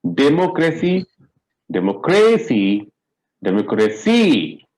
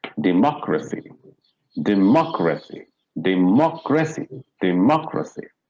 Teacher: we have to stress on the third syllable from the last